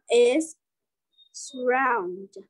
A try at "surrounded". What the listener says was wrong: Surrounded. Nó âm đờ cuối mà. Đọc rõ ràng luôn. Surrounded.